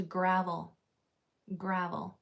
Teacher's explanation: the vowel before the last L is changing to a schwa sound